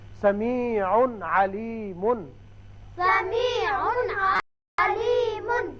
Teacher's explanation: تنوین جو نون اظہار ہوتا ہے یہاں تو اچھی طرح اظہار کریں گے ہم